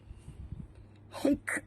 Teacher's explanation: Ma fihi muz dajar, hikmatun balighah, fama tughnin nuzur. Hik, bunyikan hamas pada huruf kaf yang mati